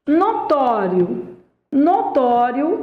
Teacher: notório é uma paroxítona cuja tonicidade recai na penúltima sílaba